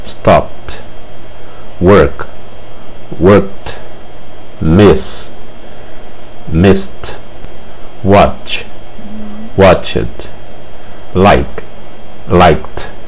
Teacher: SS, SH, P, K, X e CH, o ED, que representa o passado, será pronunciado T. Veja o exemplo.